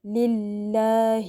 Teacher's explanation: ہا کے نیچے جو زیر ہے اس کو لمبا نہیں کرنا بالکل بھی، لام کی زیر کے جتنا ہی پڑھنا ہے ، زیر کی آواز ای کی آئے، للہ والحمد للہ، اگر